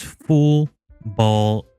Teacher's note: The difference is that the back of the tongue is raised towards the villim when the avear lateral is varized. [music] You can hear the dark L sound in English words such as full ball and so on. · the back of the tongue is raised towards the velum when the alveolar lateral is velarized